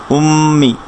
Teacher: মিম তাজদিদ গুন্না হবে, অর্থাৎ নেজাল সাউন্ড হবে। এভাবে ধরবে, মিমের নিচে কাসর মি, উম্মি।